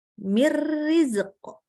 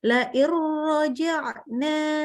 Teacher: Lebur. Tidak ada lagi sifat huruf nun yang tersisa. Langsung ke huruf ra. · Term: idgham